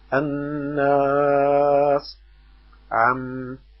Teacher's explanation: ومخرجها من الخيشوم، وهو خرق الأنف وتمد حركتين. وللنون والميم المشددتين حكم واحد وهو الغنة، وتمد بمقدار حركتين، وتقدر الحركة بضم اليد أو فتحها من غير سرعة أو بطء.